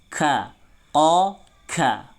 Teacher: Ada beberapa teman-teman yang membaca K itu jadi K, K, bukan K, tapi K. Harus ada hamsnya, harus ada angin yang keluar